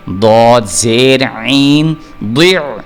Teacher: اس کو دی پڑھ دیا تو غلط ہو جائے گا, دی یعنی دال, تو دال چونکہ حروف مستعلیہ میں سے نہیں ہے اس لیے ہم اس کو ضاد پڑھیں گے اور پر کر کے پڑھیں گے, موٹا کر کے پڑھیں گے